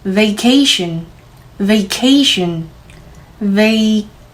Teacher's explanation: 음은 살짝 올라가면서 vacation 강세는 넣어지지만 호흡과 발성은 변함이 없습니다.